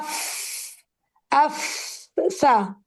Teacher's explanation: हम ऊपर वाले दांत और नीचे वाले होठों के अंदरूनी हिस्से को टच कर रहे हैं। अफ ये फ का मखरज है।